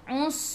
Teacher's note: Us masuk ke dalam sin, sin ada sukun dan bunyikan sifat huruf sin safir